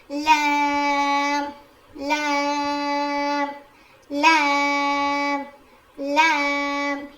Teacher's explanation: زبان کے کنارے کو اوپر کے داڑوں میں لگائیں گے